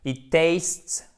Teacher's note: Alors c'est un peu dur là parce que du coup on a un enchaînement ST, une voyelle puis un S, mais on l'entend tout de même ce S, il est tout atténué à la fin.